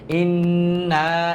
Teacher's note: নুনে তারজিদ হয়েছে এজন্য গুন্না